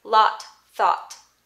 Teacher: there's some dialects in american english that say lot thought and they sound exactly the same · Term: lot thought merger